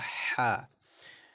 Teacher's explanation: This is a throaty kind of light H sound. Right? So it's a ha. So we pronounce it from the middle of the throat.